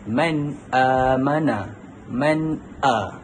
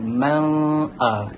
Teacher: Nun mati bertemu dengan hamzah, dan hamzah itu adalah huruf izhar halki. Tak perlu pun dibaca dengung